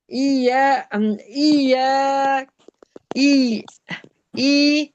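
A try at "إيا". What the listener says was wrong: या को खींचें। ई नहीं, या अलिफ जबर को खींचें। ई फिर या अलिफ जबर क्या है।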